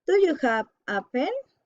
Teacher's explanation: general question rising intonation